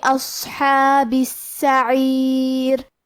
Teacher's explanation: حرف الحاء کو ہم حلق کے درمیان والے حصے سے ادا کریں گے. کلمت السعیر میں سین پہ تشدید ہے لہذا ہمیں سین کو 2 حرف کے برابر پڑھنا ہے. آخری میں حرف الراء کا حکم ہے ترقیق لہذا ہمیں را کو پتلی آواز میں پڑھنا ہے.